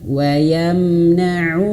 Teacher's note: Hamzah wasalnya tidak dibaca ya